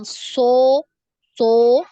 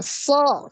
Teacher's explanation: Dia tidak dimonyongkan, ya, tidak dibulatkan bibirnya. Bukan so, so.